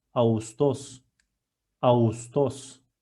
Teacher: Soft G combines two vowels which are A and U , in a smooth way